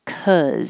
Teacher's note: the jaw is higher and the tongue is low in the middle